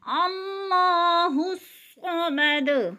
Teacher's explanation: صاد موٹے حروف میں سے ہے، صاد بھی پر پڑھا جائے گا، اور دال کے اوپر قلقلہ کریں گے وقف کی صورت میں۔